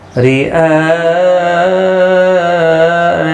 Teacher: را زیر کی وجہ سے باریک پڑھا جائے گا اور یہاں پر مد متصل ہے، چار الف کی مد متصل 4 الف کی مقدار کے برابر کھینچ کر پڑھیں گے۔ نون مشدد پر غنہ ہوگا